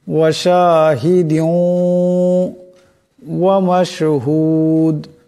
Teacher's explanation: এখানে দালের নিচে দুই জেরের তনবিন, এরপর ওয়াও আসছে। এই দুই জেরের তনবিন ওয়াওয়ের সাথে মিলে যাবে এবং ঈদগাম হয়ে যাবে। ঈদগামের এক আলিফ পরিমাণ গুন্না হবে।